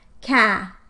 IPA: kæ